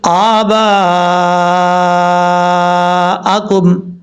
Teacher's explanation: آپ 3 الف کے برابر آپ مد متصل کو جو ہے لمبا کر سکتے ہیں